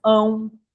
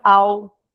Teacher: o tio ele é apenas uma marca de nasalização pra gente fazer esse ão, senão a gente falaria a, né? A gente não fala, eu vou ao parque a, a gente não fala ão, né?